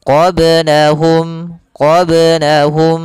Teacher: Maka huruf ba di sini harus memantul, jangan tidak memantul, jangan qablahum. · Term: qalqalah